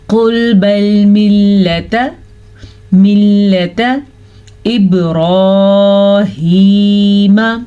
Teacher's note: با کے اوپر قلقلہ ہو رہا ہے کیونکہ با حروف قلقلہ میں سے ہے. را کو پور پڑھیں گے، ہا کے تلفظ کا دھیان رکھیں گے اور کھڑی زبر اور کھڑی زیر کی مقدار کا بھی دھیان رکھیں گے، یہ زبر سے زیادہ ہوتی ہے.